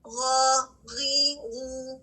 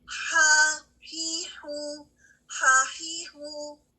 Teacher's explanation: ہا کی ادائیگی کے دوران ہوا جاری رہتی ہے, جس کی وجہ سے اس کی آواز کمزور ہے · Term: ہمس